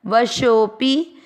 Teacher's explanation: शो की मात्रा को लंबा खींचते हुए छोटा पी पढ़ना है